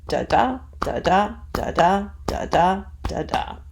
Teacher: So long, short, short, long, short, long, short, long, short, long, short, long, or you could think of it as unstressed, stressed, unstressed, stressed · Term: iambic feet